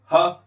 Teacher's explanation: ह का उच्चारण स्वर यंत्र से होता है जो कंठ के भीतर है · ह है उसका उच्चारण स्थान होता है हमारे कंठ के भीतर स्थित स्वर यंत्र